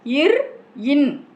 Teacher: முன் அன்னத்தின் நாவானது பொருந்திய நிலையில் இர், இன் ஆகிய ஒலிகள் பிறக்கின்றன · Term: முன் அன்ன மூக்கொலி